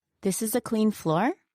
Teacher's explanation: However, if she says it like this, This is a clean floor? with an upward intonation, then her statement just became a question, asking whether or not the floor is clean.